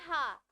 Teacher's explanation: हा का उच्चारण स्थान क्या होता है, कंठ होता है, ठीक है, क्योंकि भाई गले से ध्वनि आ रही है। और इसको क्या बोलते हैं, काकल्य व्यंजन भी बोलते हैं।